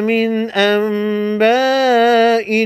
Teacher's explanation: نون ساکن کے نون کو میم میں بدل کر غنہ کے ساتھ پڑھیں گے۔ علامت کے طور پر یہاں پر چھوٹا سا میم لگا ہوا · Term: اقلاب